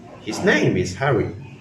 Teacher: But if we say, "His name is Harry," with a falling pitch, it's just a normal statement